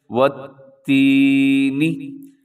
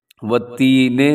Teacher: نون سے نی ہوتا ہے، نون سے نے نہیں پڑھنا۔ والتینے یہ غلط ہے، عام طور پہ ہمارے ہاں والتینے لوگ پڑھ دیتے ہیں۔